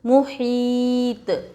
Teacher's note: محیط، میم پیش مو، حا یا طا زیر حیط، محیط. میم کے اوپر پیش حرکت تھوڑا بھی نہ کھینچے